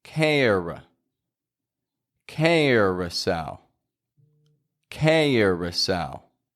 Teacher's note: the OU in the middle isn't pronounced as an OU. It's pronounced as a schwa.